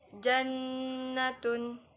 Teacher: dari Nun bertasydid seperti jannatun nah di situ kan ada eh dengungan selama dua ketukan ataupun kita sebut satu Alif